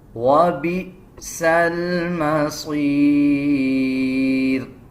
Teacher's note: جب حمزہ کے اوپر جزم آ جائے تو اس حمزہ کو جھٹکے کے ساتھ ادا کیا جاتا ہے، جیسے وَبِئْسَ الْمَصِيرُ۔